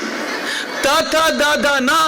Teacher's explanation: ನಾಲಿಗೆ ಹೊರಳುತ್ತೆ ಪ್ಯಾಲೆಟ್ ಗೆ ಬಡಿಯುತ್ತೆ ತ ದ ದ ನ ಅಂತ ಹೇಳಿ ನಾಲಿಗೆ ಬಂದು ಹಲ್ಲಿಗೆ ತಾಕುತ್ತೆ